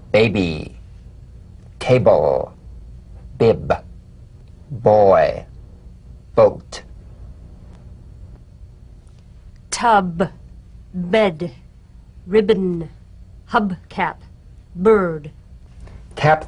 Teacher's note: springing away from contact not by pressing the lips together together you'll feel a gentle voiced pulsation on the lips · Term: drumbeat staccato consonant